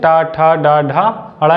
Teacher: तो उसे वहाँ से चा छा जा झा यहाँ का उच्चारण होता है। और टा वर्ग का उच्चारण, जो लाइनिंग वाला पार्ट, उसे मूर्धा कहते हैं। वहाँ से टा ठा डा ढा अड़ा या टा वर्ग का उच्चारण होता है।